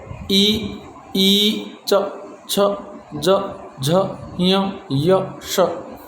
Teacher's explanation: इन सबको बोलते समय हमारी जो जीवा है वो तालु से टकराती है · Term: तालव्य